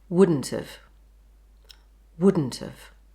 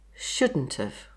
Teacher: Drop the D and block the airflow at the glottis. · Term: glottal stop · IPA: Woulʔən't've